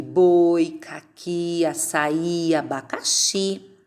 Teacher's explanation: A última sílaba que termina com o I tem o som mais forte. Então, é a sílaba tônica.